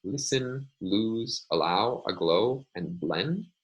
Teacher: So the difference between these sounds is that the light L of English doesn't have any, the tongue body is not also against the velum, whereas with the dark L, the tongue body is also against a velum. So at the very beginning of a word or preceding a vowel, in English, we find the light L